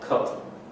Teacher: You'll get a mid-non-round pronunciation that sounds like cut. That's what you get in most of North America.